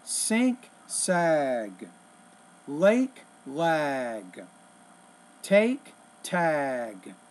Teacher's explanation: when the G is at the end of the word the vowel which precedes it will be longer